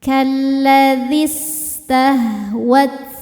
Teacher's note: Suktemu sukun tidak bisa dibaca sehingga sukun pertama dilepaskan. Maka zal kasrah ini kalau wasal dibaca tanpa mad jadi pendek. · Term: takhallus bil hadfi